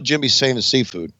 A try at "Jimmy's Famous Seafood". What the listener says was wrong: Because it sounds like you're saying same ass seafood.